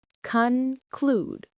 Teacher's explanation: Stress on the second syllable. Conclude. It rhymes with rude.